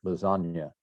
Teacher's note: So Agnus, the G and the N, they're kind of a NY sound